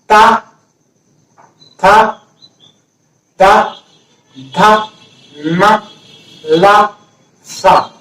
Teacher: ता वर्ग का उच्चारण स्थान है दांत और इसकी ध्वनि का नाम है दंत्य ध्वनि, क्योंकि दांत से टकराएगी जीवा।